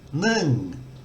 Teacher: the thai word for one nun ends with an ng sound and if i try to continue voicing it i can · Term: live